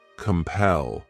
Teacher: This word has 2 syllables, and the stress is on that second syllable